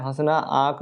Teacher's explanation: हल्का सा नाक से वायु निकल रही है आवाज आ रहा है और मुख से आवाज आ रहा है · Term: अनुनासिक